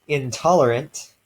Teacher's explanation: Intolerant basically stays the same because the t is also alveolar and the n just stays alveolar like it would. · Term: alveolar nasal